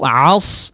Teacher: Ditebalkan huruf shadnya sehingga tidak tercampur atau samar seperti huruf sin ya